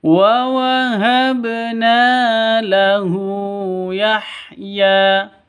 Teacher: na dibaca panjang 2 ketukan karena ada alif diawali dengan fathah. Bacaan mad asli.